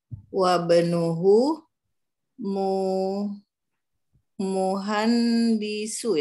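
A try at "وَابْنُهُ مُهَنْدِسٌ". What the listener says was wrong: Ya, muhandisun ya. menjadi tanwin ya, nggak ada alif lam. Nah, wa benuhu muhandisun.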